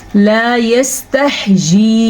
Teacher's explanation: लाम के बाद अलिफ है तो इसे हम खींच के पढ़ेंगे क्योंकि ये अलिफ मद्दा है।